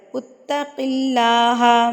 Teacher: اللہ سے پہلے اگر زیر آ جاتی ہے تو اللہ لفظ پر نہیں پڑھا جاتا، اللہ باریک پڑھا جاتا ہے